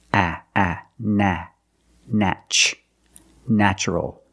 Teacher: The first syllable is pronounced with a short A, like black cat